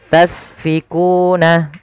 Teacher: La tasfikuna dima'akum, la tasfikuna, sin juga jangan sampai mantul, jangan la tasfikuna, itu memantul sinnya. Agar sempurna alirkan nafasnya, karena sin punya sifat sofir · Agar sempurna alirkan nafasnya, karena sin punya sifat sofir. Sifat pertama hamus, ada sifat sofirnya berdesis ya.